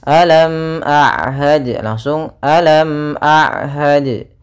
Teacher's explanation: suara mimnya harus dibaca dengan jelas. Ya, tidak boleh ditahan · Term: izhar syafawi